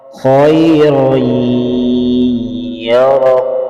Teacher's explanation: खा को पुर पढ़ेंगे, रा को पुर पढ़ेंगे, या मुशद्दद पर गुन्ना करेंगे।